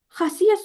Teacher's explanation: Xasiyyət sözünə fikir versəniz, burada sözün tələffüzündə sizdə A səsi uzun tələffüz olunur və siz tələffüz zamanı edirsiniz, səs düşüm hadisəsinə rast gəlirsiniz.